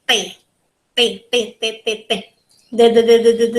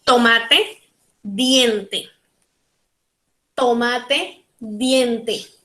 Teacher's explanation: Dentals because we put our tongue in the back part of our teeth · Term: dental sounds